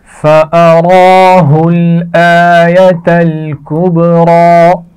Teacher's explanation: را کھڑی زبر ہے اور موٹی پڑھی جائے گی. آیۃ الکبریٰ یہ تینوں الفاظ ملا کر پڑھے جا رہے ہیں.